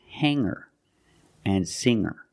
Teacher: I don't pronounce the G sound it's just the nasal linked together with the ER